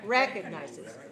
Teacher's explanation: Stress the first syllable.